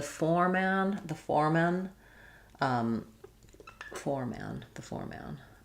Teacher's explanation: We have letters F-O-R-E say the same as the number 4 or the And so we have the first syllable stress with the or diphthong